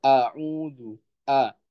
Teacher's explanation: Sifatnya hamzah ini syiddah. Ya, dia tertahan nafasnya.